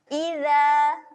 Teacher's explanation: Okey, yang first sekali huruf zal. Zal huruf yang kena jeli lidah. Jangan lupa keluarkan lidah.